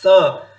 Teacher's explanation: तो ये सकार क्या है? दंत्य सकार, अर्थात जब जिह्वा कहां टच हो रही है? दांत के क्षेत्र में।